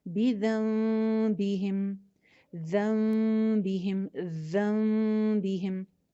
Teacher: پھر جو نون کی آواز ہوتی ہے وہ میم میں چینج ہو جاتی ہے، پھر ہم وہاں پہ نون نہیں پڑھتے بلکہ ہم میم پڑھتے ہیں۔ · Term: اقلاب